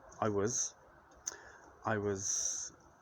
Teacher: when we say it in the sentence it takes on schwa this uh unvoiced unstressed sound